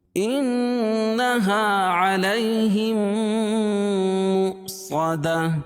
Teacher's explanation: صاد کو موٹا پڑھیں گے کیونکہ حروف مستعلیہ میں سے ہے، اور گولتا کو وقفہ کی حالت میں ہائے ساکنہ سے بدل دیں گے.